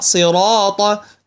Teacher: نرى ان الراء مفخمه